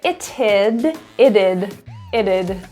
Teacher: It would turns to it'd. The T actually, because it's surrounded by two vowels, ends up turning into a flap T, and that sounds like a D.